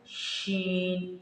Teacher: जब भी हमने शीन को अदा करना है तो मुंह के अंदर आवाज़ पूरी तरह फैल जाती है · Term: सिफ्ते तफशी